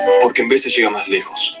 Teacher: vamos a tener muchos hablantes de español que van a pronunciar labio dental